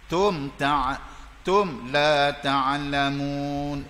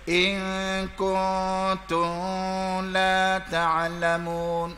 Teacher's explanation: bacaan izhar terang jelas, tidak boleh dengung, tutup mulut. Itu hukum mim. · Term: izhar safawi